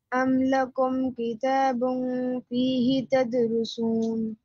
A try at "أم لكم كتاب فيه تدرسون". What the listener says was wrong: No, you're doing the same thing. Why are you stretching he again?